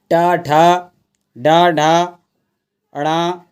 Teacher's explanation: आपका कहां से बोला जाता है मुर्धन से बोला जाता है ट ठ ड ढ ण यह सारे के सारे और जो आपके उत्क्षिप्त व्यंजन भी है वह भी आपके कहां से मुर्धन से बोले जाते हैं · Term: मूर्धन्य